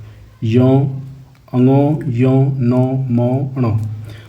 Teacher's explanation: इनका उच्चारण करते टाइम नाक से आवाज आती है। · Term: अनुनासिक वर्ण